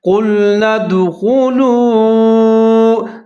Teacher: واو کو تھوڑا سا لمبا کر کے پڑھیں گے کیونکہ یہ حروف مدہ میں سے آ رہا ہے